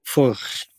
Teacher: Actually, Czech pronunciation is Furch. More rolled R and then CH.